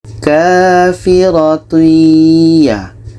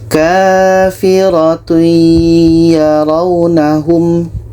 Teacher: Tanwin kita masukkan ke ya dan diiringi dengan dengung. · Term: idgham bi gunnah